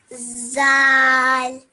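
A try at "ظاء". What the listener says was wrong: Now this is zal. This one is za. Okay, so there's no you don't say zal. It's za.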